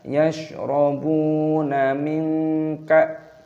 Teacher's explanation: nun sukun bertemu dengan kaf, dibaca ikhfa, artinya samar